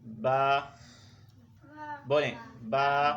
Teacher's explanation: ٹھیک ہے، اصل جو اس کی ادائیگی ہے، جب ہم خاموش ہو جاتے ہیں، بول کر خاموش ہوتے ہیں، ہمارے ہونٹ آپس میں مل جاتے ہیں، بند ہو جاتے ہیں، تو یہ دونوں ہونٹوں کے ملنے سے با ادا ہوگا۔ کوئی زور نہیں لگانا، کوئی جو ہے وہ جلدی نہیں کرنی ہے، بس آپس میں ہونٹ ملیں گے، آپ نے بولنا ہے، با ادا ہو جائے گا۔